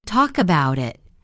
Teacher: The words connect. No long pauses in between. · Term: linking